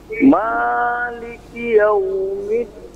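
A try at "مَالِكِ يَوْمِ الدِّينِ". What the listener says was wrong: Sekali lagi, jangan terlalu panjang. Jangan tapi maliki. Pendekkan lagi.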